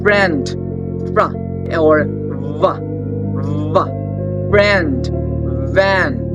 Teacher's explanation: labiodental means they are the sounds produced with your lower lips, okay, and your upper teeth